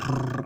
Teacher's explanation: The trill, that R has to be trilled, it has to be rolled, it is never retroflexed.